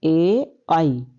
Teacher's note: कंठ प्लस तालू से बोले जाते हैं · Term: कंठ तालू